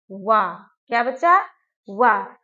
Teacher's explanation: तो वा हमारा ऐसा वर्ण है जिसका उच्चारण स्थान क्या है, दंतोष्ठ है, यानी कि दांत और ओष्ठ से।